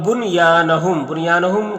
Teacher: بنیانہم کے نون میں اظہار مطلق ہوگا، یعنی نون کو ظاہر کر کے جلد پڑھیں گے